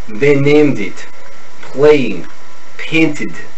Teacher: The long A becomes the short E.